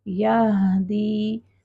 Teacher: ہا کو جب ہم نے ساکن کرنا ہے تو اپنے مخرج پر اس کو ساکن کا یعنی 1.5 حرکت کا ٹائم دینا ہے. یہدی. ساکن مین سکون والا، ساکن لیٹر کو سکون سے ادا کریں گے. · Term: ہا ساکن